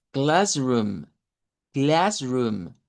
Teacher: se usa ese sonido e como una mezcla entre a y e, ¿verdad? Para esa vocal a y decimos classroom.